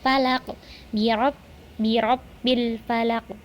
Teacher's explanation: Karena di huruf qafnya tidak ada tasdid sehingga tidak ditahan terlebih dahulu, langsung saja dipantulkan. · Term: qalqalah kubro